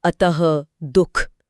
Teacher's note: विसर्ग का उच्चारण एक झटकेदार ह के समान होता है और यह ध्वनि में एक गहरा ठहराव या भारीपन ले आता है।